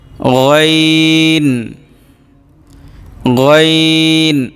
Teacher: গইন, গইন, গলার শেষ ভাগ থেকে আসবে